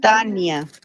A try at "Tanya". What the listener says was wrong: It sounds like you're putting an ñ. No.